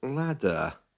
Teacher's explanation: you can hear the r at the end of that word is silent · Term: received pronunciation